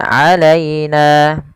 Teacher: lembutkan pada lafal ya yang didahului dengan fathah karena ia bacaan lin